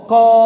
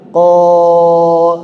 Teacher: mengucapkan ka dengan o ko enggak bergemah Koo enggak bergemah tapi ketika kita menebalkan lidah kita menguatkan lidah kita suaranya akan bergema